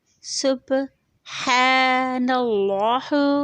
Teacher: نون کے اوپر زبر ہے، لام موٹا پڑھا جائے گا